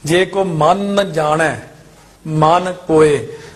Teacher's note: ਪਹਿਲਾ ਮਨ ਕਸ ਕੇ ਬੋਲਣਾ ਜ਼ੋਰ ਨਾਲ